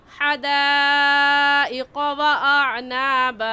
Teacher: इस मद को 4 अलिफ के बराबर खींच कर पढ़ेंगे, ना इससे कम और ना ही इससे ज़्यादा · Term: मद्द मुत्तसिल